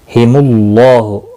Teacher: अल्लाह का लाम पूर पढ़ा जाएगा ज़बर पेश की वजह से। और यहाँ पर खड़ी ज़बर भी है अलाम के ऊपर, तो इसका एक अलिफ के बराबर खींच कर भी पढ़ेंगे।